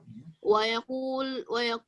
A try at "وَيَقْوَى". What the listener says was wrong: Wayakwa ini ada kesalahan Fatan ya. Ini titiknya salah ini ya.